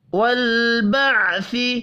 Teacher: لام ساکن پر اور عین ساکن پر قلقلہ نہیں ہوگا۔ والبعث بعد الموت، عین اور لام ساکن ہے، دونوں پر قلقلہ نہیں کریں گے۔